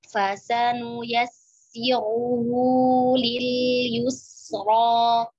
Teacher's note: ra di sini tebal karena barisnya dhamma